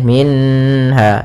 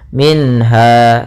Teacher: maka harus jelas suara nunnya tidak boleh tahan tidak boleh minha tapi langsung saja minha Kemudian Ha Ada Mad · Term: izhar halqi